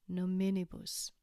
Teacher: Nominibus has four syllables, so we change the pronunciation again to emphasize the second syllable